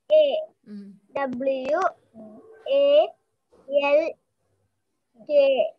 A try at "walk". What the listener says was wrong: L. Not yell. L. W. A. L. K. Walk.